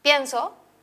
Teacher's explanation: puede aparecer en la penúltima sílaba como en la palabra pienso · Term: acento